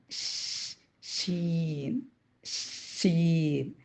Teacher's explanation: നാവിന്റെ മധ്യഭാഗവും നേരെ മേൽ അണ്ണാക്കും ഷീൻ ഷീൻ അതുപോലെതന്നെ പറ്റ അങ്ങോട്ട് പ്രസ്സ് ചെയ്യാണ്ട് ചെറിയൊരു വിടവ് വരുത്തിയിട്ട് നമ്മൾ